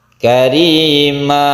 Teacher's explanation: Iwad artinya ganti, maksudnya adalah tanwin ini sudah diganti menjadi mad. Karima, tanwinnya itu tidak dibaca lagi, sebagai gantinya yaitu dibaca panjang. Ini khusus fathaten. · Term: mad iwad